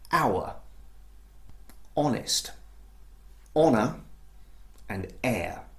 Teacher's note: So here are a few examples where the letter H at the beginning of the word is actually unvoiced, it's silent